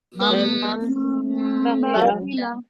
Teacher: नून गुन्ना की तरह ही मीम की आवाज को रोकेंगे ना नाक में बहुत देर तक